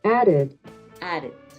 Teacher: aded listo en este caso como termina en D added added tiende esa d repetida a ejercer un sonido como de r